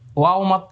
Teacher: কোরআন মাজিদের যেখানে পাবেন যে কোন অবস্থায় পাবেন ঠোট গোল হবে শুরু এবং শেষ দুই জায়গায় ঠোট গোল